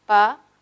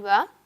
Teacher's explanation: en el caso de pa no vibran las cuerdas, pero en va sí vibran. Uno es sordo y el segundo es sonoro.